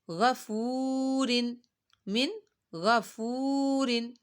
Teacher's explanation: واؤ ساکن سے پہلے پیش آ رہی ہے تو واؤ مدہ ہو رہا ہے یہاں پہ لمبا کریں گے